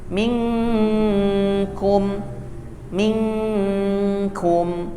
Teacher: huruf kaf dan huruf qaf itu ketika dia ikhfa, samar, dibacanya cenderung ng ya.